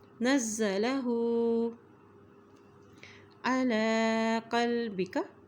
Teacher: علی لام کے اوپر کھڑی زبر ہے اس لیے اس کو ایک حرکت لمبا پڑھیں گے